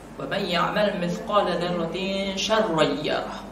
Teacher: apabila ada nun sukun di sini atau tanwin itu bertemu dengan huruf sya, maka dibacanya itu adalah ikhfa hakiki. Ikhfa itu samar-samar, ya. Dibacanya samar-samar.